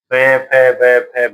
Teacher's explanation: इनको पोष् उच्चारण है। होठ है इनका उच्चारण स्थान